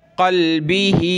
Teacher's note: खड़ी ज़ेर हो तो नीचे की तरफ खींचेंगे एक अलिफ की मिक़दार